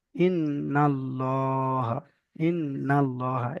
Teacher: লাম তাসদিদের পূর্বে যদি জাবার অথবা পেশ থাকে তাহলে আল্লাহর লামকে পুর অর্থাৎ ল পড়তে হয়